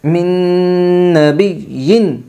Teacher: یمن کے 4 حرفوں میں سے میم آئی ہے، اس لیے نون ساکن کو غنہ کے ساتھ ملا کر پڑھے گے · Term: ادغام مع الغنہ